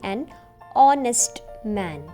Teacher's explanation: H is silent, so we are saying an honest man.